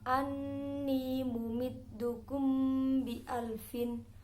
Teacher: Mim sukun bertemu ba dinamakan ifa safawi, harus dibaca dengung 1 alif atau 2 harokat.